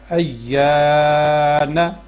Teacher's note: حروف مدہ یہ تین ہیں، الف، واو اور یا، لیکن الف سے پہلے زبر ہو تب اور واو ساکن سے پہلے پیش ہو تب اس کو لمبا کریں گے، اور یا ساکن سے پہلے زیر ہو تو تب اس کو لمبا کریں گے۔ ایک الف کے برابر کھینچ کے پڑھنا ہے، لمبا کر کے پڑھنا ہے